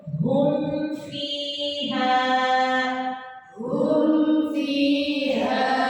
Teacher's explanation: humnya tetap dijelaskan walaupun dia ketemu fa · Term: idgham syafawi